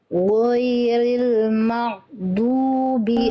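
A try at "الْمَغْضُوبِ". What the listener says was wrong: Bukan mak, bukan mak. Ngalir suaranya Bunda. Huruf ghain ngalir suaranya. Maghdubi. Rasakan dari tenggorokan paling atas, alirkan suaranya.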